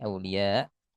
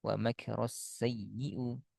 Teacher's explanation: Hamzah sukun arid diawali mad. Maka cara baca sukunnya volume suara dinaikkan.